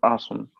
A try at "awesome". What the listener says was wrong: awesome, awesome. not a. Yeah, it's written as a, but you pronounce it as o. Awesome. So you say this is awesome. That's how you pronounce it. And usually the right way to pronounce it is awesome, because uh, the British, this word comes from America.